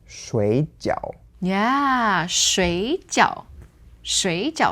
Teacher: normally third tone for water, becomes second tone